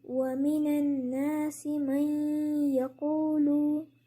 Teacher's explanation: आपने देखा कि मैंने मीम को या में दाखिल कर दिया मई, और नून को बीच से हटा दिया और उसकी जगह गुन्ना कर दिया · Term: इदगाम